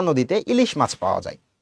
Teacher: কিন্তু যখন তুমি উচ্চারণ করতে যাও তখন কিন্তু তুমি দীর্ঘই টাকে দীর্ঘ করে উচ্চারণ করো না